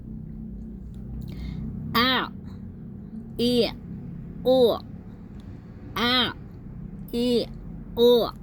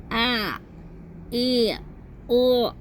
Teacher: Caranya kita baca dulu hamzah. Hamzahnya makhrajnya keluar dari pangkal tenggorokan. Kemudian kita menuju ke tengah tenggorokan untuk mengucapkan ain sukun.